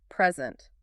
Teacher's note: Stress the first syllable. Present. That's a noun, a gift.